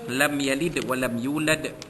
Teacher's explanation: mim mati bertemu dengan ya, izhar syafawi, menyatakan bunyi mim mati bertemu dengan huruf ya. Yalid walam, yalid, jadi dal itu, dal mati itu berada di hujung kalimah, maka kita nyatakan dengan kuat lantunan bunyi itu, qalqalah kubra, lam yalid walam yulad.